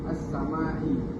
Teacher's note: as-samai ada mad asli dibaca dengan dua harakat